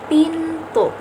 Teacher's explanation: Huruf T pada kata pintu dihasilkan oleh pergerakan lidah, ujung lidah menyentuh gigi atas. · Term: apikodental, bunyi apikodental